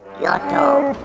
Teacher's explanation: The second word might at first sound like our previous yoto, but notice that the stress is now on the first syllable